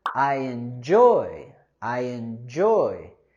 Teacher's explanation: with the word enjoy, we want to go higher with our stress and intonation on the second syllable.